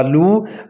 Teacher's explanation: next لام پیشوا لو، واو مدہ، واو ساکن ہے اور اس سے پہلے لام کے اوپر پیش ہے، تو اس کو کھینچ کر پڑھنا ہے